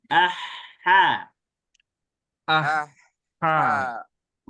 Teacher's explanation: suara Hnya mengalir dialirkan dilamakan sedikit